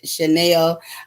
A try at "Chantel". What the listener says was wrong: It's Chantel. Chantel. Chantal. Chantel because there's a T, so you can just say Chantel.